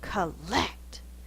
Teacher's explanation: lots of force on the second syllable the first syllable is unstressed